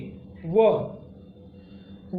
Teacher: व ध्वनि आपकी दंतोष्ठ है और इसे अर्ध स्वर भी बोलते हैं।